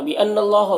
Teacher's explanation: نون مشدد غنہ ہوگا اور اللہ کے لام کو پر پڑھیں گے